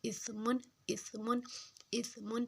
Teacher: اب یہ جو سا ہے اس کو نرم حروف ہے، اس میں زبان کی نوک کو دونوں دانتوں کے اوپر اور نیچے والے دونوں دانتوں کے درمیان لے کے آنا ہے اور اس کو نرمی سے ادا کرنا ہے، اسمن، اسمن، اسمن۔